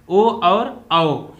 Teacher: कंठ और ओष्ठ की सहायता से बोले जाते हैं